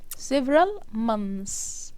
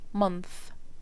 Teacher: ده كده several months S sound. الجمع S sound، المفرد هنطلع لساننا بره بالفاء month